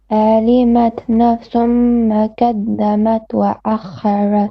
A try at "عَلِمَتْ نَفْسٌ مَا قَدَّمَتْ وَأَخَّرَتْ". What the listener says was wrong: Okay, a few mistakes here. علمت عين. علمت, don't stretch it as well. نفس, to be صغنة. نفس ما ق, heavy letter. قدمت وأخرت.